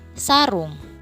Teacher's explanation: Pada frikatif alveolar dapat ditemukan bunyi es. Es merupakan bunyi tak bersuara, contohnya pada kata sarung.